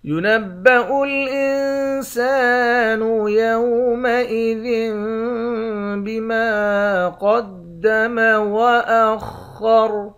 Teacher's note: ينبأ الإنسان يومئذ بما قدم وأخر، اس نون پر اخفا کریں گے، سین کے بعد الف ہے، اس الف کو ایک الف کی مقدار کھینچ کر پڑھتے ہیں۔ ذال کو اس چھوٹے والے میم سے ملا کر یہاں اقلاب کریں گے، یعنی غنہ کر کے پڑھیں گے۔